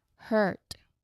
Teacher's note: So here, the pronunciation tip refers to the British like her. So this vowel sound is a mid-central vowel, meaning it's similar to the sound in the American English word like bird. But it's sometimes, a bit more drawn out.